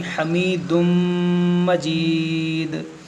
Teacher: हमीदुन मजीद नहीं पढ़ेंगे बल्कि हमीदुम मजीद। और यहाँ पर देखेंगे वक्फ़ है, वक्फ़ ताम की अलामत है, तो इस दो पेश को हम यहाँ पर साकिन करेंगे, वक्फ़ करेंगे तो हमीदुम मजीद। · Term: इदगाम